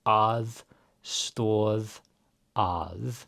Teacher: Again, we have an eð. So this is voiced. It's not aðstoðað, but aðstoð að.